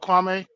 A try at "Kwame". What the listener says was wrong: Kwame. You got like a little A. Hey, you might can't pronounce E. A. It's a vowel. and you can't even say E.